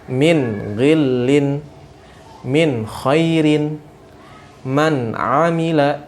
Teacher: nunnya dibaca jelas dan tidak ada gunnah di sana